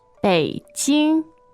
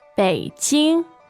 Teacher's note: the tones in Chinese are Third and first. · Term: third tone and first tone